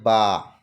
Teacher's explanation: বা কোথা থেকে উচ্চারিত হয় আমরা মাখরাজে পড়েছি, 2 ঠোঁটের শুকনো অংশ থেকে উচ্চারিত হয় বা।